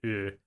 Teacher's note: uh in Japanese is unrounded. And it's hard for an English speaker to hear that.